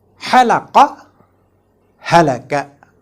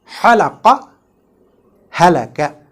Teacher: halaqa with a ha from wastul halaq with friction is a verb which means to shave, while halaka with a ha from aqsal halaq without friction